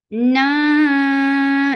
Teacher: Na ikhfa. This ikhfa is light, and you're keeping the sound in your nose for a longer time.